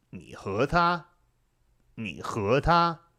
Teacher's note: when you have that third tone, second tone, that 你 和 他, it's kind of nice because the sound follows a straight line.